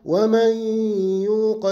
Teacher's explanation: ومن يوق إدغام بغنة، النون جاء بعدها ياء، إذن إدغام بغنة